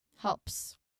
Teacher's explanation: This is a classic example of a plural or third person singular verb ending. So it's the L sound followed by P and then unvoiced S helps. All three sounds must be pronounced clearly. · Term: LPS cluster